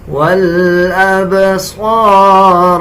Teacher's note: صاد کو پر یعنی موٹا پڑھیں گے، را کو بھی موٹا پڑھا جائے گا